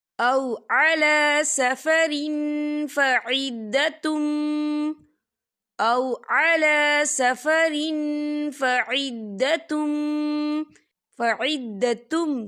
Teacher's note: تنوین کی آواز کو ناک میں چھپائیں گے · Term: اقفا